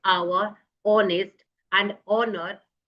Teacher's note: all these h begins with h but the h sound remains silent and the vowel sound comes